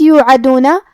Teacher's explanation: حرف العین کو ہم حلق کے درمیان والے حصے سے ادا کریں گے